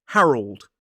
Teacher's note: Two syllables, stress on the first. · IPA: /ˈhærəld/